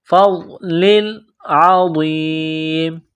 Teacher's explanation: عین کو گلے سے نکالیں گے زور لگا کر